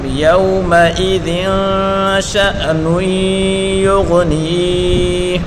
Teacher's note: شین کو حمزہ کے ساتھ ملا کر پڑھیں گے، حمزہ ساکن کو جھٹکے کے ساتھ پڑھیں گے